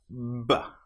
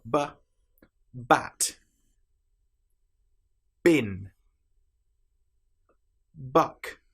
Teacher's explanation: Lips together build up pressure behind. With the B sound, we build up pressure with the vocal cords.